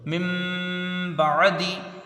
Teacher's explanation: last میں دیکھیں جو اوپر میں مثال دیا تھا وہی ایک لاسٹ میں آ گئی ہے، میم نون زیر من، ٹھیک ہے، با عین زبر با، دال زیر دی، من بعدی، خالی اگر کوئی من پڑھے تو پھر وہاں میم نہیں پڑھی جائے گی، نون ہی پڑھا، لکھا تو نون ہے، لیکن جب با آگے آتا ہے اور پورا جب ہمیں یہ لفظ پڑھنا ہے تو پھر میم پڑھے گی